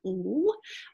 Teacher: So we have a lateral approximant here, L.